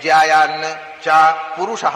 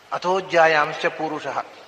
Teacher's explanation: ಪುರುಷಃ ಅಂತ ಪದಪಾಠ ಸಂಹಿತಾದಲ್ಲಿ ಪೂರುಷಃ ಅಂತ ದೀರ್ಘ ಇದೆ